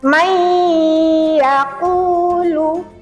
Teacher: dibacanya dengan cara berdengung, kemudian kita tahan 2 sampai 3 harokat dengungnya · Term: idgham bi gunnah